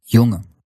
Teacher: Like in jongen, there's no g in there at all.